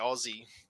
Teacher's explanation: rest mozzie [Laughter] and notice it's not aussie it's aussie australian and for some reason the s turns into a zed it's just it flows out better it's easier to say aussie